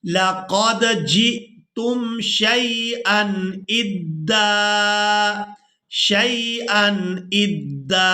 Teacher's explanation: जीम को हमजा साकिन के साथ मिलाएंगे तो झटके के साथ अदा करेंगे